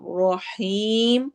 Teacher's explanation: رو کو موٹا کرتے ہوئے حیم میں ہم مد العارض للسکون کریں گے